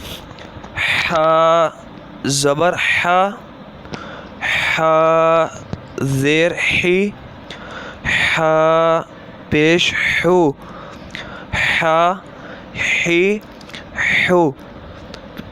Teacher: ہا بھی حمزہ کی طرح حلق کے نیچے والے حصے سے ادا ہوتا ہے، اس کو پڑھتے وقت بھی خاص خیال رکھنا ہے، کیونکہ ہا اور ہا ان دونوں میں بھی فرق ضروری ہے۔